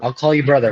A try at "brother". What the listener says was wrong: Pronounce that R like pronounce that R Don't put that A at the end of that because that's condescending.